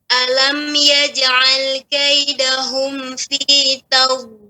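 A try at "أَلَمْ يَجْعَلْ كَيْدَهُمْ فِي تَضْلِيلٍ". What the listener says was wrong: Baik. Ya, lanjutkan.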